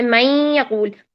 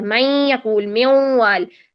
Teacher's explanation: جیسے میں یقول، میں دیکھیے نون، نون کی آواز آ رہی ہے نا، پوری طرح تو مرج نہیں ہوا، نون ختم تو نہیں ہوا، تو نون کی آواز آ رہی ہے جس کی وجہ سے ہم کہیں گے کہ یہ ادغام ناقص ہے.